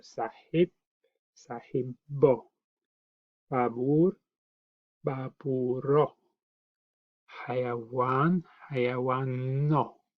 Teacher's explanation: the b is a really strong b, little bit longer, and also very, very energetic